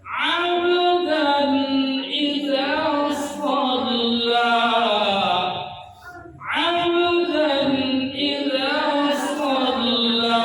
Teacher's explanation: Oke, dannya izhar. Abnya Qalqalah sughra. qalqalah yang kecil pantulannya.